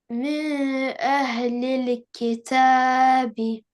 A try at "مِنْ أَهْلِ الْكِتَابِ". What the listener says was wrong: This noon will not be in the ikhfa. This noon will be pronounced correct clearly.